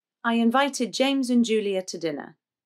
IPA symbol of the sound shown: ə